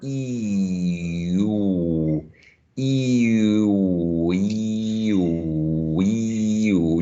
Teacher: both are high vowel sounds meaning the tongue is up when you produce them